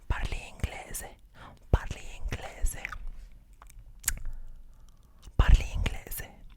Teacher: And you want to have a rising intonation